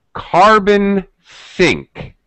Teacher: like this we call this phenomena a pause carbon think pause she paused ever so slightly before she said carbon sink and she paused afterwards to sort of separate that phrase from the rest of her speaking she made it very obvious that she was highlighting that specific